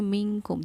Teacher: وہیں منکم کو ہم پڑھیں گے منکم، جیسے پنکھا ہوتا ہے، پنکھے کو ہم جو ہے انک کے بندے کو اس طرح پڑھتے ہیں کہ ناک میں آواز بھی چلی جاتی ہے لیکن نئے کی آواز نہیں آتی، پنکھا. اسی طرح منکم کر کے ہم اس کو پڑھیں گے. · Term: اخفا